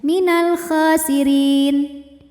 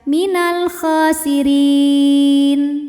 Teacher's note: Sebab ada mad tabi'i yang bertemu dengan huruf yang disukunkan karena waqaf, di mana mad tabi'inya adalah ya sukun yang didahului baris kasrah, kemudian huruf yang disukunkannya adalah huruf nun. Jadi ketika berhenti, ra-nya boleh kita pilih panjangnya, boleh 2 atau 4 atau 6 harokat, tapi dengan catatan harus konsisten atau harus sama dalam 1 kali bacaan. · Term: mad arid li sukun